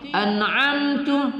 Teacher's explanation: An'amtu mim sukun bertemu ta adalah izhar syafawi, tidak kita dengungkan